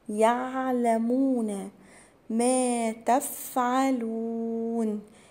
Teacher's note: العين بتبقى عميقة كده، تبقى من جوه كده